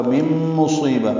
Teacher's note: نون ساکن کے بعد میم آنے کی وجہ سے ادغام ناقص ہے، غنہ ہوگا مم مصیبہ، صاد پر پڑھیں گے اور یہ یا مدہ ہے تو حرکات لمبا کریں گے۔